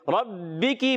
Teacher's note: रा पर ज़बर आने की वजह से रापुर अदा करेंगे